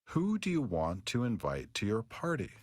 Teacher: Nah, yang perlu diperhatikan kalau kalian bertanya using WH question words, you need to use the falling intonation, not the rising intonation.